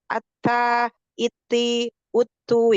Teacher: kalau ta memang ada aliran nafasnya